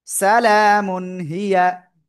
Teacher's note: তানবিনের পরে ইজহারের অক্ষর হা আসছে, স্পষ্ট করে পড়তে হবে। সালামুন হিয়া, স্পষ্ট বলতে ডাইরেক্ট দন্তন্য।